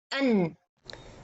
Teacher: I meant by that, when you say an, the sound is go, part of it for the mouth and part of it continue from the nose. So the mouth area or the tongue area, the place my tongue hit the articulation point of noon, this is the part of mukammil. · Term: letter noon